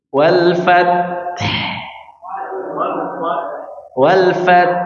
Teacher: Jadi huruf ta mengalir hanya pada nafasnya, tapi kalau huruf ha mengalir suaranya dan mengalir nafasnya.